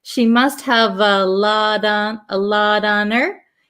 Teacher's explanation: this T in lot becomes a flap T so it almost sounds like a d